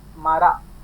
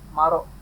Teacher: In west part of Pattu it is Mara, and east part of Pattu it is Maro. That Ra with the A sound is in west, Ra with the O sound is in the east.